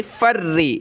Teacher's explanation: रा पे ज़ेर है तो इसको पतला करेंगे, तशदीद की वजह से सख्त करेंगे।